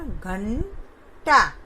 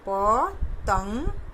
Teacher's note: तो इसमें देखिए अनुस्वार लिखा तो वैसे ही जाता है, लेकिन इसका उच्चारण में आधे न का उच्चारण होता है